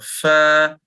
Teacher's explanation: മേലെ മുമ്പലിന്റെ തലഭാഗം താഴെ ചുണ്ടിന്റെ ഉൾഭിത്തിയിൽ വെക്കുക ഫ പറഞ്ഞു നോക്കൂ ഫ കാറ്റ് ഇങ്ങനെ പാസ് ചെയ്യ ഇനി ചുണ്ടിൽ നിന്ന്